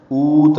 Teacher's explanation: واو مدہ ہے، یہ او 2 حرکات لمبا کریں گے